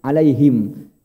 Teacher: ha itu kan tempatnya di bawah Pak, di tenggorokan bawah ha, ya.